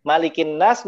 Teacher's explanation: Nun bertasydid ditahan sebanyak tiga harokat